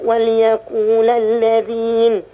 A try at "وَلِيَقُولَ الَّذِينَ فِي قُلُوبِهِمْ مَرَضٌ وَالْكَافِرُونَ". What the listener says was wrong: اللام مكسورة.